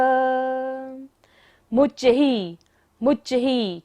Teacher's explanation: विसर्ग है, सांस लेंगे भी और वापस भी छोड़ना है